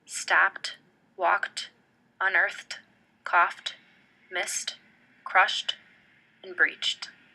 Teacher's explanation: This means that the t does not create an airflow outward from the mouth and that the tongue only gently makes contact with the alveolar ridge. Because the verbs in the orange box all end with voiceless sounds, their ending will take the form of a voiceless, unaspirated t, such as stopped, walked, unearthed, coughed, missed, crushed, and breached.